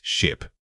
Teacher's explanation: Notice how quick and clipped this syllable is. The short I sound should feel effortless. It requires minimal tongue movement or expansion. If you linger on the vow, it automatically lengthens.